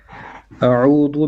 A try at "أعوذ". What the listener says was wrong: أعوذ, make your ذال more clear. أعوذ.